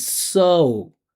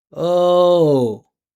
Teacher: the pitch of the vibration goes up and goes down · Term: path of the vowel